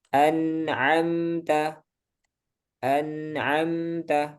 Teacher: Ada dengungnya tapi cuma sebentar. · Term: dengungnya itu cuma sebentar